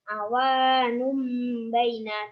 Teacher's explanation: Alasannya karena domah tanwin bertemu dengan B. Cara membacanya dengung 3 harokat seperti mim. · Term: iklab